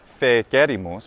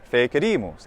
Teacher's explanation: way for the perfect subjunctive is not fe querimus but actually with that phonemic vowel length we know from the penultimate stress rule that it has to be stressed there